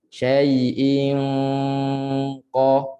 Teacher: Ada sentuhan yang lembut. Dan suara itu 100% ke hidung untuk dengung qaf ataupun kaf.